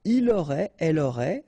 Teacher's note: final T not pronounced, so phonetically exactly the same form here